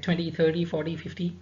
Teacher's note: if there are multiples of 10, like 20, 30, 40, 50, stress on the first syllable